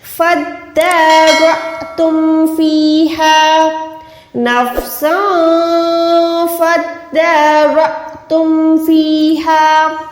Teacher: تو یہ فادا نہیں ہے بلکہ فا دال زبر فد، دال کھڑی زبر دا، فد را، تم را کو موٹا رکھیں، حمزہ کے ساتھ ملا کے جھٹکا دیں۔ جب بھی حمزہ ساکن کے ساتھ آتا ہے تو ہم وہاں پر را کر کے نہیں پڑھتے بلکہ جھٹکا دیتے ہیں، بھلے یہ لمبا والا یہاں پر الف ہوتا یا یہ چھوٹو والا الف ہے، لیکن یہ ساکن اگر آ گئی حمزہ کے اوپر یا الف کے اوپر تو ہم نے وہاں پر جھٹکا دینا ہے۔